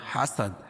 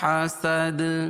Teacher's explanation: حاسد دال کے اوپر جزم لے کر آئیں گے وقفہ کی حالت میں، اور یہاں قلقلہ ہوگا کہ جب ان 5 حرفوں میں وقفاً یا وصلاً جزم ہو تو وہاں قلقلہ ہوتا ہے.